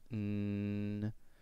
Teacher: all of your tongue is touching the sides and roof of your mouth, and air is coming out of your nose instead.